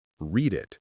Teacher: The duh sound links to the i sound. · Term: linking